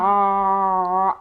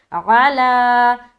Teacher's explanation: ऐन की अदा आएगी बिल्कुल हलक से